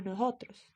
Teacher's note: la s suele ser aspirado cuando estés intervocálica es decir ellos no dicen nosotros sino nosotros